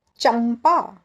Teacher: जैसे कि एक शब्द है चंपा। च के ऊपर अनुस्वार, आगे आया प, तो उसका अनुनासिक आखिरी वाला वर्ण म, तो उसका उच्चार हम करेंगे चंपा।